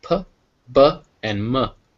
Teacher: it's made with both lips